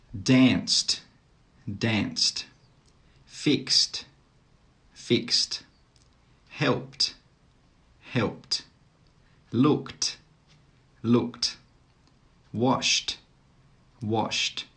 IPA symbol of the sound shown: t